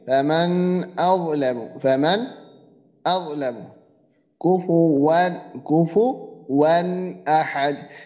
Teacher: কারণ এখানে ইজহারের যে 6 হরফের একটা হরফ হলো হামজা, সে হামজা এখানে নুন সাকিনের পরের হরফ হামজা, এই জন্য এটাকে আমি কি করতেছি, ওই নুন সাকিনকে গুন্না ছাড়া স্পষ্ট করিয়া পড়িতেছি